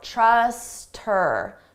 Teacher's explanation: we can get rid of that H sound and it just sounds like, uh, trust her. But then you combine it to the word before.